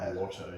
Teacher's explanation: we have in uh the United States more of an Irish R where we pronounce like the R at the end of water